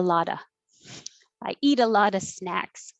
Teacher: the t in eat changes to a d